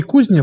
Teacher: Другий «ні» м'який, і він пом'якшує твердий «з». Отже, «з» пом'якшується до «зі».